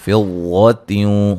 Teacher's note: واد کو موٹا ادا کریں گے، یہاں نون تنوین کا ادغام مع الغنہ ہے